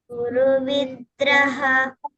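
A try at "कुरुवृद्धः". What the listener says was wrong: Kuru vriddhah. So when we say dha, these are Mahaprana. So dha. There is lot of air coming out of your mouth. And it is again, you have to touch the tongue to your teeth in the front teeth. Dha. Dha. Da nahi, dha.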